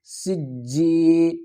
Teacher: سین جیم زیر سج، جیم یا زیر جیم، یا مدہ ہے، ایک الف کی مقدار کھینچ کر پڑھیں گے